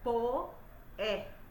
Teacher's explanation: Vocês sabem que poeta a gente fala diferente, fala separado. É um hiato.